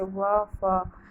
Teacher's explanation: दंतोष्ठ्य इनके उच्चारण ऊपर के दांत और नीचे के ओष्ठ में प्रयुक्त